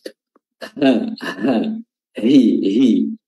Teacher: huruf ha makhrajnya adalah tenggorokan bagian bawah atau aqsal halq